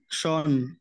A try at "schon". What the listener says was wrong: শিউন, নট শন, শিউন, শোন না, শিউন, শিউন। শোন বললে অলরেডি হয়ে যাবে, শিউন। এই যে একটু প্রেসার দিবেন, শরীরে একদম